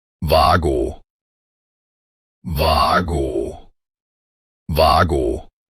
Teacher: The initial letter W is pronounced with a V sound, and both vowels are drawn out long and clear.